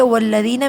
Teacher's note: والذین میں یا ساکن سے پہلے کسرہ ہے، 2 کاؤنٹس کھینچیں گے